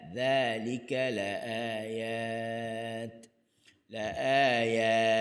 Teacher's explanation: kalimah dhalika huruf dhal. Hujung lidah di hujung gigi atas.